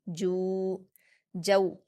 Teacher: جیم پر واؤ مدہ ہے 2 حرکات کھینچ کر پڑھیں گے